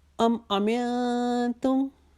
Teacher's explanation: نون ساکن کے بعد تا ہے، یہاں پہ ایک الف کے جتنا اخفا کریں گے. امنتم کے بعد پھر من کے اوپر جو ہے میم اس کے اوپر تشدید ہے، وہاں پر پھر ایک الف کے جتنا غنہ کریں گے، الف کے جتنا رکھیں گے.